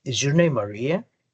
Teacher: Ya no terminé por allá arriba con el tono, sino que terminé abajito.